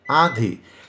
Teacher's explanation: तो जिन स्वरों के उच्चारण में हवा डायरेक्ट मुंह से निकलती है, ठीक है, उन्हें निर्नुनासिक कहते हैं। और जिन शब्दों के उच्चारण में हवा मुंह और नाक दोनों से निकलती है, जैसे आंधी का आप उच्चारण कर रहे हैं, आंधी, तो नाक और मुंह दोनों से निकल रही है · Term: अनुनासिक